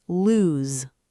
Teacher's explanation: And lose has the z sound, lose, like news, like shoes. That z at the end is stronger. >> Two o's in lose gives you the loose sound.